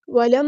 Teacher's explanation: یہاں پر میم پہ دیکھیں غنہ زمانی ہو رہا ہے تو ایک الف کے برابر رکیں گے